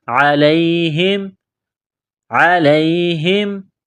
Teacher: عین گلے کے درمیان سے زور لگا کر عین کو نکالیں گے